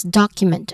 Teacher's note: The stress syllable is on doc or the first syllable